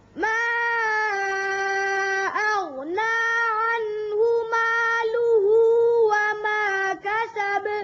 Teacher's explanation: مالوہ ظاہر کر کے پڑھیں، اچھی طرح لام کی پیش ظاہر کریں